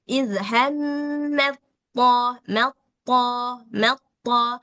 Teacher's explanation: Nah, kalau misalkan tanya yang sukun, tonya yang berharokat, maka sitaknya ini nggak usah dibaca lagi, langsung diidghamkan ke to.